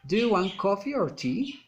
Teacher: Alternative questions, rising and falling intonation.